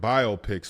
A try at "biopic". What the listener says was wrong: A biopic. You're putting the emphasis on the wrong syllable, man. It's biopic. Biopic. It's not biopic.